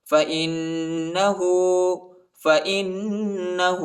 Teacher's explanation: حمزہ کو نون کے ساتھ ملائیں گے اور غنہ بھی کریں گے · ہاں پر الٹا پیش آیا ہے، اس کو ایک الف کی مقدار تک کھینچیں گے